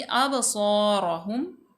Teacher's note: सौद जो है हरूफ मुस्तालिया में से है, पुर पढ़ा जाएगा · बा साकन माकबल मफ्तू हरूफ कलकला में से है, इसको हम जुम्बश दे के यानी कि हिला के पढ़ेंगे